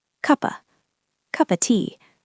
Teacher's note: Of is a function word. Of sounds like of, but we drop the V usually, so it is just cuppa.